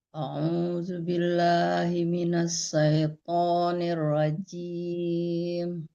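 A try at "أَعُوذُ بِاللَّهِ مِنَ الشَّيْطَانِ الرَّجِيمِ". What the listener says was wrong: Ya, shin-nya yang belum tepat ya Ibu ya, dari kemarin membaca jangan say tapi shay. A'udzu billahi minasyaitonir rajim. Lebih keras baca shin-nya ya.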